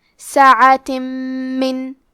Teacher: ادغام کا معنی ہے حرف کو حرف میں داخل کرنا، تو ہم تنوین کو میم میں ملا کے غنہ اور تشدید کے ساتھ یہ حکم کو ادا کریں گے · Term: ادغام بغنہ